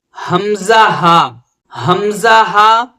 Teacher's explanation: چھوٹی ہا اور حمزہ یہ حلق سے سب سے نچلے حصے سے نکلتے ہیں